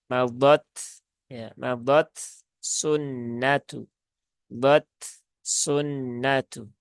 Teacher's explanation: tunaikan dulu sifat dari huruf ta, yaitu salah satunya ada sifat hamas dan juga syiddah. Setelah itu baru ke huruf sin. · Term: idhar